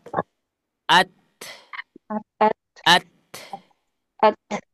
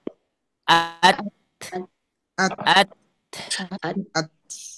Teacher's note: Nah, bagaimana caranya? Ketika kita ingin mengucapkan huruf ta, maka syiddahkan dulu suaranya, baru keluarkan nafasnya. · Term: sifat hamesnya